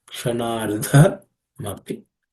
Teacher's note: The dha is also aspirated because the fourth letter in the ta varga, ta class of consonants.